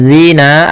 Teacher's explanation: pada lafal zina ada kasrah bertemu ya sukun, maka kita namakan mad tabi'i, yaitu panjangnya 2 harakat, atau boleh juga mad asli.